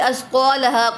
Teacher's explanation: وَأَخْرَجَتِ وَأَخْ، خوا کو پر پڑھیں گے، خوا پر مستعلیہ میں سے ہے، وَأَخْرَجَتِ اور ضاد کو بھی پر پڑھیں گے، را کو پر پڑھیں گے، اسقالها، قا پہ الف مدہ ہو رہا ہے اور ہا پر بھی الف مدہ ہو رہا ہے